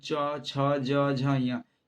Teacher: च छ ज झ य, इसको पढ़िएगा तो तालू से होगा, जीभ होगा जो ऊपर में सटेगा। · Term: च वर्ग